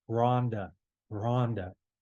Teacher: it has a rough breathing so it's more of a you put a breath behind it